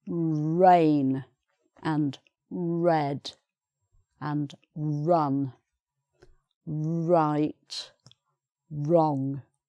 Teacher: r sound is more at the back of the throat but in english british english it's right at the front of the mouth and you push your lips forward